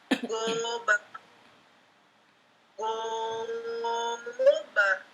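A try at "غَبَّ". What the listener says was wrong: Tegas yang kurang. Tasdidnya kurang. Go. Di datar dulu aja, pelan dulu. Goba.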